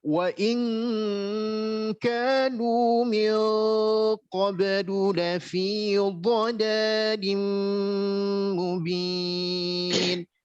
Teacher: bukan dengung, karena dengung harus lewat hidung.